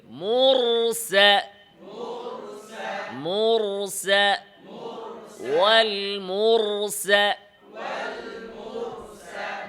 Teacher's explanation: মোটা করতে হলে আওয়াজের গতি উপরে, মুর, জিহ্বার গোড়া উপরে, আওয়াজ উপরের দিকে